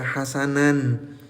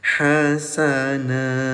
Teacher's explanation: Kalau berhentinya di fatahtain atau di garis duanya di atas, maka bunyi tanwinnya dirubah jadi panjang. Ya, bukan tanwin lagi tapi madh hasana.